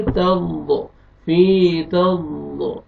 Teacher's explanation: ضاد کو موٹا کر کے پڑھیں گے